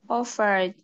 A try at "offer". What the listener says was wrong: Offer. Ok, tenemos que tomar la última letra para discernir. Offer. ¿Cuál sería la última letra que suena? Offer. Offer. Ah, letter D. Aquí yo le escuché ED.